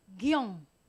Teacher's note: Porque es una vocal abierta con una vocal cerrada en un mismo golpe de voz. Y la mayor fuerza de pronunciación recae en la vocal abierta.